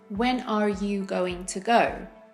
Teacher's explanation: that r sound links right into the you in American English